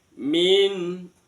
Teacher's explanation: Saddau wamin, di waminnya itu ada nun sukun bertemu dengan kho, maka nunnya wajib dibaca jelas, namanya idhar halqi. Nunnya jelas karena bertemu dengan huruf kerongkongan. Min sampai bunyi sempurna en.